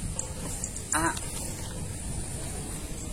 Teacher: Dalam melafalkan huruf ini yaitu dengan cara menutup bagian tengah tenggorokan disertai dengan nafas tertahan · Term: huruf ain